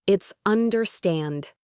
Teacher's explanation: The stress is at the end.